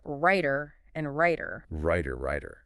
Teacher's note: For many American English speakers, both the T in writer and the D in writer get pronounced as that quick little flap sound which we write as the flap.